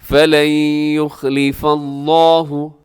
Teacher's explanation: لفظ اللہ سے پہلے فا کے اوپر زبر ہے، لفظ اللہ کو موٹا کر دیجئے گا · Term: لفظ اللہ موٹا